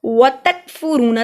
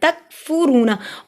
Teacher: तक काफ मरकज वाला बारीक पढ़ा जाता है